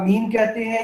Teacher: आप मीन कहते हैं, ये मसमू, दोलबी, अनफी है